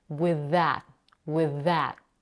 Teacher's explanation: we have the same consonant that links both words, the voiced th sound. So she naturally blends both words together.